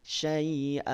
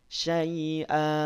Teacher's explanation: Habiskan saja 2 harokat tanpa ada suara yang direm. Syai'a. Dua-duanya berhenti, tapi cara berhentinya beda. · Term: 2 harokatnya dihabiskan